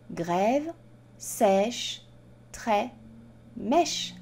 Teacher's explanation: il s'agit d'une voyelle ouverte c'est à dire que les lèvres sont ouvertes quand on prononce cette voyelle